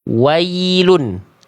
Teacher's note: Ketika diawali ya sukunnya oleh huruf berharokat fathah, seringkali dibaca dengan vokal E. Vokalnya miring, harusnya ke vokal I.